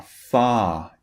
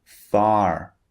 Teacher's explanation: in British English when the r comes at the end of a word we do not pronounce it so when the r is at the end it just turns